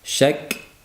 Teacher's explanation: Shak kaning shadda va hams degan sifatini bildirish lozim. Shak ham qattiq uriladi, ham havo chiqadi.